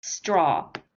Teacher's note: What you're doing when you say it is you're doing more of a sh sound, but it needs to be, it's not a sh, it's a s, just a s